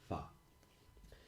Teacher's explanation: the unvoiced bilabial fricative